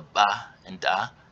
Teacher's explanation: And you have implosives like the ba and da.